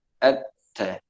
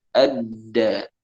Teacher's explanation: huruf ta itu sifatnya adalah hamas misalnya. Nah, sedangkan dal itu sifatnya adalah jahr.